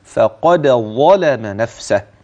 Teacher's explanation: تظهر هذه الدال اذا وقع بعدها ظاء هكذا فقد ظلم نفسه الدال واضحه والظاء واضحه الدال واضحه ساكنه مقلقله · الدال واضحة والظاء واضحة، الدال واضحة ساكنة مقلقلة والظاء بعدها كذلك